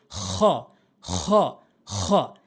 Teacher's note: হটা হচ্ছে হলকের শেষ থেকে, একদম হলকের শেষ থেকে হ, এরকম শব্দ করে উচ্চারণ করবেন।